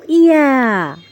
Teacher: জিহ্বার মাঝখানটা তালুর সাথে একটু নরমভাবে লাগিয়ে আমরা ইয়াটাকে উচ্চারণ করব। শক্তি দেওয়া যাবে না, নরমভাবে। · ইয়াটাকে আমরা জিহ্বার মধ্যখান তার বরাবর উপরে তালুর সঙ্গে লাগিয়ে উচ্চারণ করব।